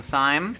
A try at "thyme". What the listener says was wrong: The H is silent.